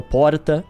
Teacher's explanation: São Paulo também, o R de São Paulo, porta, aquele vibrado também é tolerado.